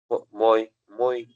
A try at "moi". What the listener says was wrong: What is OI? OI I said was UA. Moi. You cannot say moi, yeah? OI is UA, so you have to say moi.